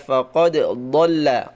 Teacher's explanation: Yang fasih adalah faqad dolla. Dolla dia keluar dari ee tepi lidah bagian kiri bertemu dengan geraham atas. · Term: dod, dot